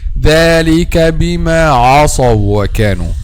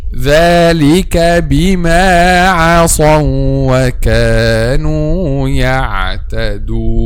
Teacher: Don't make العين a heavy because the next one is heavy. No, العين is light. Whatever the next one is, heavy or light.